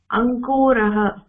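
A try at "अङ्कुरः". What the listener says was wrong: अंकुरः नास्ति खलु तत्र कु दीर्घं न अंकुरः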